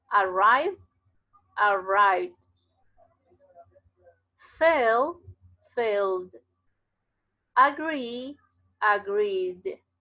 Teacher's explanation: cuando el verbo termina en un sonido que vibra, esta D se pronuncia como D. Entonces yo digo arrive, arrive, arrive con V, arrive.